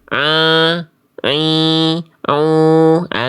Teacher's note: ain ini ketika berharakat seringkiali suaranya masuk ke dalam rongga hidung sehingga sengau